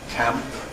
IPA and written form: kæmp (camp)